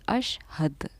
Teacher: دال ساکینہ پر ہمارا قلقلے کا قاعدہ جاری ہوتا ہے